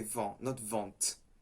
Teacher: in vent, you have a T at the end, which is silent. You say vent, not vent.